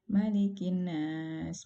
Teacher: Nah, kemudian yang berikutnya adalah tergesa-gesa dalam gunnah. Jadi tidak menahan gunnahnya, tidak ditahan.